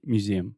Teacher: you don't have to put a stress on the mu. Imagine you're saying new.